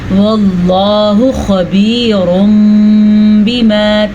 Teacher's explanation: واللہ خبیر بما، تنوین کے بعد با آیا ہوا ہے تو اس لیے یہاں پہ اقلاب کا قاعدہ ہو رہا ہے. تنوین کے بعد با آ جائے یا نون ساکن کے بعد با آ جائے تو اس کو میم میں بدل دیتے ہیں